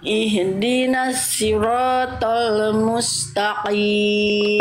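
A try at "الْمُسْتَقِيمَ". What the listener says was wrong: nanti dilatih lagi huru-huruf tebalnya pangk lidahnya masih kurang diangkat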